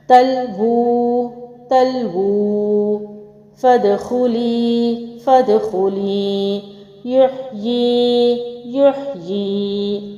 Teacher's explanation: حروف مدہ اور کھڑی حرکات پر وقف کرتے ہوئے انہیں ایسے ہی ایک الف کے برابر لمبا کرتے ہیں